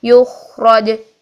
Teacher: اس کی بیس چونکہ بریتھ بیس ہے، یہ ماموسہ حرف ہے، تو اس میں سانس بھی جاری رکھیے. پھر ہم ان دونوں کوالٹیز کو جب اکٹھا ادا کریں گے تو بہترین ادا ہوگا.